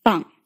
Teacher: this vowel is similar to the English a as in father but it's a bit more forward in your mouth